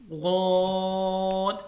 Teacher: غود، اس کو 5 الف کے برابر لمبا کرنا ہے، اور یہ موٹا لفظ ہے، اس کو پر پڑھنا ہے 2، اور اس کو مخرج اس کا یہ ہے، یعنی کہاں سے ادا کرنا ہے کہ زبان کی بائیں جانب جو کروٹ ہے وہ اوپر کی داڑھوں سے جب لگے گا تو تبھی غود ادا ہوگا